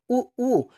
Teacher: ऊ का उच्चारण करते हो ऊ, तो लगता है दोनों ओष्ठ जो हैं ये एकदम सट्टे से जैसे हो जाते हैं, सट नहीं जाते हैं, बिल्कुल सट्टे से हो जाते हैं।